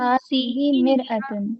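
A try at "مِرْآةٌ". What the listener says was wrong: मिर आतुन है ना, इस पर ये मद लगा हो, मिर आतुन।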